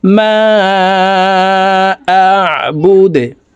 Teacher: তো এখানে এইভাবে থামবো, দেখুন মা আবুদে, দাল যেহেতু কলকলার হরফ, নিচের দিকে ধাবিত করে ধাক্কা দিয়ে দালকে সাকিন করতে হবে